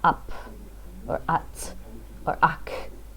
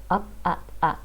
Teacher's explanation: It's like the P, T, and K are trying to escape my mouth, but I keep my mouth closed so it doesn't actually come out. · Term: stop